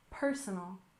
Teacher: We stress the first syllable in personal, personal.